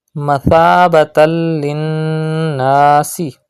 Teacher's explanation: Pronounce tha without whistle sound and do gunna in noon mushaddad. Gunna means taking the sound into the nose.